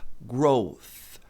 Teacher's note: Para produzir esse som, você coloca a língua entre os dentes e produz um som de S.